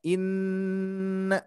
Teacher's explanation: Nun bertasydid harus didengungkan ditahan